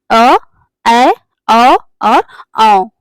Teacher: अर्ध विवृत स्वर के उच्चारण में मुख द्वार अध खुला होता है यानी कि आधा खुला होता है ये संख्या में चार होते हैं अर्धवृत्त स्वर संख्या में चार